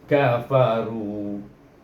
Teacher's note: Ra dibaca tebal kerana baris depan.